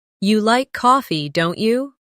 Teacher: making your voice rise slightly at the end of the tag question